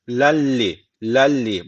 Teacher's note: gunnesiz bir şekilde bağlayacağız